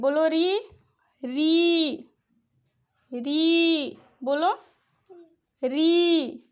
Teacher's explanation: जब री उच्चारित करते हैं तो हमारा जिह्वा जो है तलवा और दांत के मध्य भाग पे टच होता है, जिसको हम मूर्धा स्थान कहते हैं।